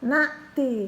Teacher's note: Ha dua harokat karena ada alif. Na'ti hamzah ya, bukan bunyi ain